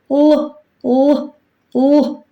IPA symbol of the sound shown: л